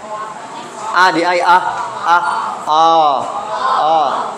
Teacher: it's very low and Our tongue is just relaxed